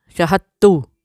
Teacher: ان کا دال کا اور تا کا تقریباً ایک جیسا ہی مخرج ہوتا ہے، جس کی وجہ سے ہم دال کو سائلنٹ کر کے تا کو 2 بار پڑھ دیتے ہیں